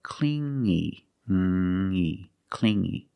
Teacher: You hear the sound only the nasal sound here, no G